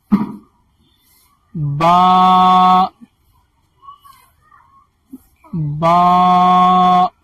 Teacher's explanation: با کا مخرج دونوں ہونٹ کا تری والا حصہ